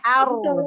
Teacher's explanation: Ro kan mempunyai sifat takrir bergetarnya ujung lidah